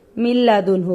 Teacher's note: اس میں ناک میں ذرا بھی آواز نہیں جاتی، خالص لام کی طرح پڑھتے ہیں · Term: ادغام بلا غنہ